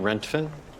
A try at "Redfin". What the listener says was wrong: No, Redfin, the real estate app. But you're saying Rentfin. It's Redfin. Okay, so this sound you're making with your mouth, is it red like the color or rent like an apartment? Okay, so say Redfin.